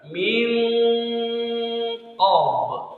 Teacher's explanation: nun mati ketemu qaf ikhfa didengungkan